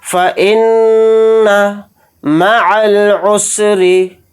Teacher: پڑھیں گے، حمزہ کو نون کے ساتھ ملا کر پڑھیں گے، نون کے اوپر تشدید ہے تو نون میں غنہ کر کے پڑھیں گے